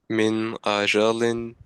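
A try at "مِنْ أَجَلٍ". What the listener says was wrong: Yeah, don't make the gunna. Just say the noon normally. Min ajalin.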